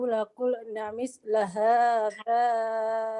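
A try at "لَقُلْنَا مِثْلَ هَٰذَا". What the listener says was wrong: Laqulna tolong dipanjangkan itu ya. Laqulna misla hadza gitu ya. Yang panjang tolong diperhatikan ya, yang pendeknya.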